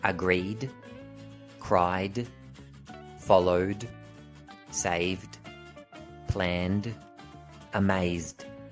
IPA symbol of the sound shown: d